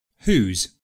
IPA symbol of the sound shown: uːz